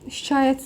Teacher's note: Bax burda şikayət sözündə ancaq uzanma var.